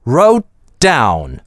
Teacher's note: Здесь двойное /d/. Гудим всю дорогу.